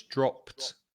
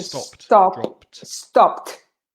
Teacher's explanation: because it's a plosive sound with the p, the p. Then the final ed is pronounced t, so it's dropped.